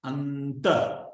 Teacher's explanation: Look at how we pronounce the N. Because it's joined to a ta, anta. It must be dental. Anta. Your tongue will also go to the teeth to pronounce the anta.